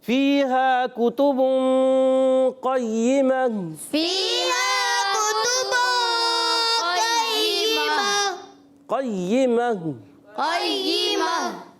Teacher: گول تا کو ہا سے بدل دیں گے، اس کو کہتے ہیں وقف بالابدال